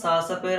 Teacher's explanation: आपका सा सपेरा होता है जो कि आपका दंत से बोला जाता है